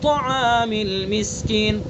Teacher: وَلَا يَحُضُّ عَلَى طَعَامِ الْمِسْكِينِ، یحض، ضاد کا مخرج زبان کی کروٹ اور اوپر کی ڈاڑوں کی جڑ، اور پر کر کے پڑھیں گے اس کو، یحض علی طعام المسکین، طا کو بھی پر پڑھیں گے، توا نہیں پڑھیں گے